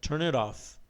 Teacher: Temos a junção do N com o it, né? E o T de it fazendo um flap T ali